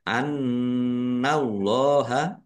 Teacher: Annallaha nun tasdid dibaca gunnah atau mendengung, ditahan ya, harus ditahan biar tampak mendengung. Annallaha Allahnya dibaca tebal karena harokat di depannya fathah. Lam fathah berdiri mat tobi'i panjang 2 harokat.